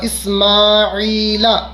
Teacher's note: یہاں میم کھینچے گا اور عین کھینچے گا